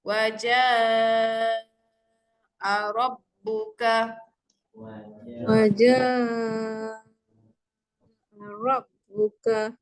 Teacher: Jadi untuk bacaan mat yang pertama mat wajib mutasil. Okay, mat berjumpa dengan hamzah berlaku dalam satu kalimah. Kita baca dengan kadar 5 harakat.